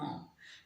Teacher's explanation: म नाक से भी मुंह से भी, दोनों होठों की सहायता से भी